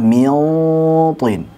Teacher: Jadi zat daripada huruf nun hilang, tersisa sifat gunnahnya saja, kemudian siap-siap ke huruf ta. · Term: ikhfa